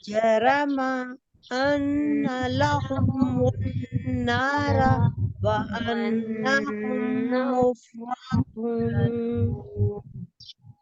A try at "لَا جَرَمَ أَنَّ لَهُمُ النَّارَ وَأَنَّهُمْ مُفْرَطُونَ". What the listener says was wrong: احتیاط کے ساتھ پڑھیے. زبر کو آپ نے بڑھانا نہیں ہے. لا جرم ان لهم النار وانهم مفرطون.